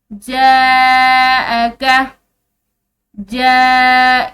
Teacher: ये अलिफ पर जो है ये बड़ी मद है तो हमने इसको लंबा खींचना है